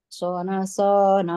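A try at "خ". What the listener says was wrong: ho, ho, ho. Bukan so.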